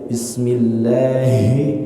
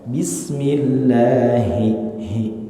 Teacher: ha besar itu huruf tenggorokan bukan huruf dada